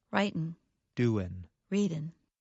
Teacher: In careful speech, Americans pronounce the G at the end of the verb. However, in fast speech, many Americans do not pronounce the G at the end of the verb. The result sounds like this: Writin', doin'.